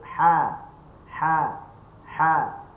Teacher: Daripada halkum tengah. Halkum tengah, atas pada biji halkum ni lah. · Pangkal lidah duduk bawah, tengah lidah tak ada lekuk. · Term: huruf ha